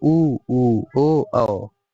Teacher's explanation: वे स्वर जिसका उच्चारण करते समय ओष्ठ गोल हो जाते हैं अर्थात वृत्त जैसे आकृति होते हैं इनके ग्रहण कर लेते हैं जैसे उ ओ औ इसको गिनेंगे तो क्या हो जाएगा इनका संख्या चार होते हैं। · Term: गोलाकार